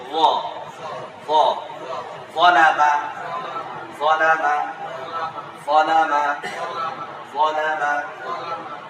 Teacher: উচ্চারণের জায়গা জিহ্বার আগা সামনে দাঁতের অগ্রভাগ।